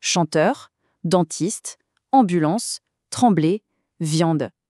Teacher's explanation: pour produire ce son, il faut que l'air sorte en même temps par la bouche et par le nez. C'est ce qui donne cette sonorité si particulière, un peu chantante, qu'on reconnaît tout de suite en français. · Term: voyelle nasale